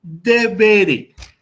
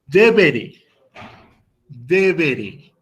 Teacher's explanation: haciendo énfasis en la penúltima sílaba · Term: acento